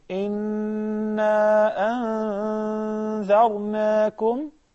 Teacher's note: because the word inna, there is a shadda over the noon, so there is a ghunna, two harakas as well.